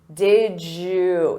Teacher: Native speakers will combine did you and say did you. Did you. So you hear a j sound. Did you. Or we can reduce that to did ya or did ya.